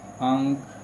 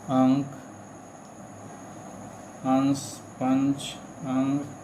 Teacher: अनुस्वार के उच्चारण में नाक से अधिक सांस निकलती है और मुख से कम